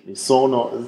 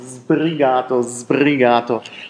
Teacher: Also spreche ich ein scharfes, stimmloses S immer aus, mi sono sbrigato, das ist aber falsch, das heißt sbrigato, sbrigato, hier haben wir sbrigato, nochmal die genaue Aussprache, also einmal stimmloser S, dann das stimmhafte S, was sich assimiliert an das B